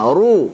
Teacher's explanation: Tebalkan runya. Ru. Jangan sampai ru tipis.